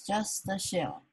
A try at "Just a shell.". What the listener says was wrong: Let's not link it because I feel like people won't understand what you're saying. If you say a shell, a shell, what's a shell?